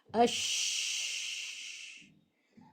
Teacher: شین کی کیریکٹرسٹک یہ ہے کہ اس کے پڑھتے وقت آواز منہ میں پھیل جائے، یعنی شور سا سنائی دے · اس کی آواز بلند ہوتی ہے اور منہ کے اندر پھیل جاتی ہے. اسی کو تفشی کہتے ہیں، صفت تفشی، جو صرف لیٹر شین کی خاصیت ہے.